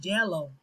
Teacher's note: The tongue is extended forward with the body of the tongue very near the tooth ridge and hard palate. Because the tongue is so high, the jaw is kept really close during the formation of this sound.